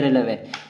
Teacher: अंतस्थ व्यंजन का मतलब है इनकी आवाज मुख के अंदर ही रहती है, ज्यादा ये आपस में स्पर्श नहीं करते